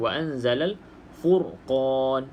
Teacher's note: ra sukun sebelumnya berbaris di hadapan, maka kita baca ra ni dengan bacaan tebal